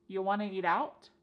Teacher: We've dropped the question word completely.